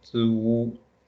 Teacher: 足 second tone means foot.